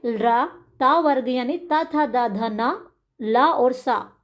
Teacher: तो त वर्ग का उच्चारण स्थान होता है हमारा दंत से।